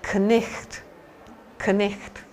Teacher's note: So they pronounce the K. They also pronounce the GH with a ch kind of sound.